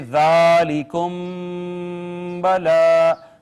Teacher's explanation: میم ساکن کے بعد با آ گئی ہے، لہٰذا یہاں پر ہوگا اخفاء شفوی، چھپا کے پڑھیں گے ذالکم بلا، تو یہ ہو گیا اخفاء شفوی۔ · دیکھ لیں ہم نے جو آج میم ساکن کے 3 قواعد پڑھے ان میں سے تیسرا قاعدہ بھی آج کے سبق میں آ گیا، میم ساکن کے بعد با آ گئی ہے، لہٰذا یہاں پر ہوگا اخفاء شفوی، چھپا کے پڑھیں گے